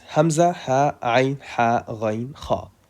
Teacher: Because they come out of the throat. They are articulated from the throat. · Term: throat letters